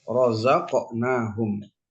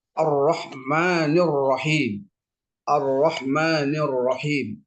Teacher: Maka ro itu secara otomatis mesti dibaca dengan tafkhim atau tebal